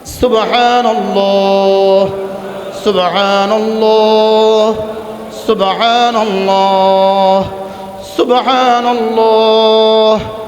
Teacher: সুব বাকে কলকলা করব, হাকে মাখরাজ থেকে উচ্চারণ করব, আল্লাহ শব্দের লামকে পুর করব, আর হা বাতাসে ছেড়ে দিব।